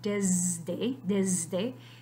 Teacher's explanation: So you see this D being voiced, retroactively affecting the sound before it, which was the phoneme S, but now is the allophone Z.